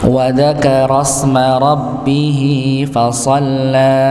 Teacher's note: Ra-nya masuk pada huruf sin, hamzahnya tidak terbaca. Nggih, karena dia sebagai hamzah wasal, maka biasanya kalau hamzah wasal dia dikasih tanda seperti itu nggih.